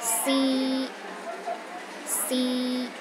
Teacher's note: the first tone is high and steady